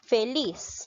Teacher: ¿Dónde lleva la mayor fuerza de voz? En la sílaba lis.